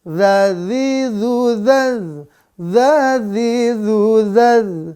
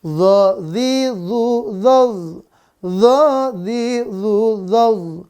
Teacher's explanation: Kalau za, dia berarti tipis dan napas tertahan. Kalau zo, dia napasnya tertahan, juga dia tebal.